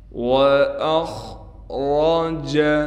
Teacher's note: حمزہ کو خا سے ملائیں گے، خا کو موٹا کر کے پڑھیں گے